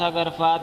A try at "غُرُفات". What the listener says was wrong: یہ غرفات بار بار آپ پڑھتے ہیں قرآن میں جو ہے نا اللہ میری طرف غرفتن، مجھے نہیں اس سے اتفاق. ضمہ کے ساتھ پڑھیں. کتابوں پر بھی غرفہ ہی لکھا ہوا ہے لیکن یہ نہیں ٹھیک.